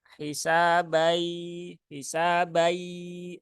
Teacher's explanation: tidak ada suara yang hilang artinya apa berarti artinya suara itu tidak masuk ke rongga hidung